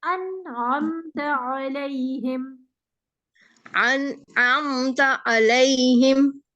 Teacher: आइन को आइन के मखरज से पढ़ेंगे, हमजा के मखरज से नहीं